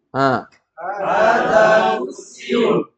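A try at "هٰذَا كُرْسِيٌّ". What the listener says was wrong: Hada kursiyun. Kalau Indonesia kan bilang kursi. Kalau ini dia ada tasdidnya. Kursiyun. Kursiyun.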